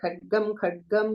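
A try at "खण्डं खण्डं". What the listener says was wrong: It should be Khandam Khandam. You have Khadgam? You said Khadgam, I heard so.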